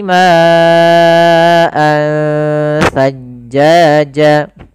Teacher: di sini ada ikhfa yaitu adanya tanwin bertemu dengan huruf tsa